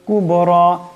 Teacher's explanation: রাকে লম্বা করিয়া পড়তে হবে এবং রাকে মোটা আওয়াজে পড়তে হবে